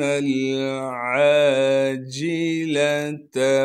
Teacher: عین کو صاف کر کے گلے سے ادا کریں گے۔ عین کے بعد الف مدہ ہونے کی وجہ سے عین کو 1 الف کے مقدار کھینچیں گے۔ اس جیم کو بغیر کھینچے پڑھنا ہے، لام کو بھی بغیر کھینچے پڑھیں گے۔